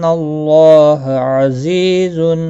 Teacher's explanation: اللہ کا لام زبر کی وجہ سے پر پڑا جائے گا